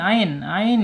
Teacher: makhraj ada di tengah-tengah tenggorokan. Jangan lupa ya jangan sampai di bawah a adu tapi harus a. · Kemudian sifatnya ada di tawas ya, antara tertahannya suara asyiddah dan mengalirnya suara arakhawah bayiniah